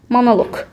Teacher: sözün sonundakı q-nı k kimi tələffüz eləyirəm